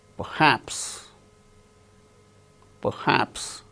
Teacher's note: R is not uttered because it is followed by h in the word perhaps.